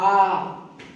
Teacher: हा को काकल्य कहते हैं, ऊष्म संघर्षी कहते हैं और स्पर्श रहित कहते हैं।